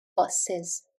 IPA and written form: bʌsɪz (buses)